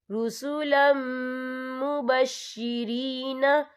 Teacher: یا دیکھیں رسولم، لام کے پر تنوین ہے، تنوین کے بعد جو ہے میم آیا ہے، اور میم جو ہے حروف یرملون میں سے ہے تو یہاں پر ادغام ہوگا، تو ہم اسے غننے کے ساتھ پڑھیں گے